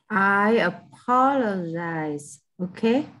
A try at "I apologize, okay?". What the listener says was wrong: Not z.